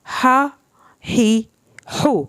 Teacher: ये हा आपने हल्क से पढ़ना है